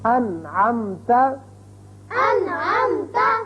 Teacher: اب نون ساکن کے بعد عین آ گیا، نون پر ہم نے اظہار کیا، نون کو ظاہر کر کے پڑھا